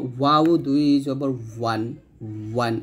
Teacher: বা এবং ওয়াও, এই বাটা দুই ঠোঁট মিল করে আমরা উচ্চারণ করব, বা দুই জবর বান, আর ওয়াওটা দুই ঠোঁট গোল করে উচ্চারণ করব